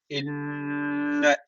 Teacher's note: inne şeddeli nun var mutlaka bir Elif miktar tutuyoruz